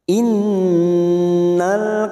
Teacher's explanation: Nun yang bertasdid gunnah musaddada kita dengungkan 3 harokat